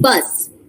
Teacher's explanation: In bus, the s is sibilant because it is a fricative.